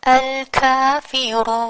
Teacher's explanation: ہم اس آخری متحرک لیٹر کو کر دیں گے ساکن. ٹھیک ہے، تو یہ ہو گیا مد عارض للسکون، یعنی وہ مد جو عارضی سکون کی وجہ سے بن رہی ہے.